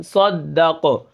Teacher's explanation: آخر میں قلقلہ، جب قاف ساکن ہوگا تو اس کو ہم قلقلہ کر کے پڑھیں گے